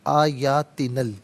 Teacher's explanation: آیاتینا میں نون پر زبر ہے، اس سے الکبریٰ کی لام ساکن کے ساتھ ملائیں گے، درمیان میں سے الف نی حمزہ کو حذف کیا جائے گا